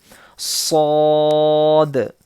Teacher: صاد اس کے بھی پڑھتے وقت سیٹی کی آواز آئے گی اور اس کو بھی ہم موٹا پڑھیں گے, ٹھیک ہے, بولڈ پڑھیں گے.